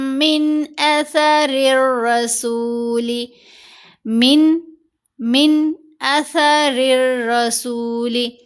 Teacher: نون ساکن کے بعد حمزہ ہے، یہاں ہم نے اظہار کرنا ہے، من پڑھنا ہے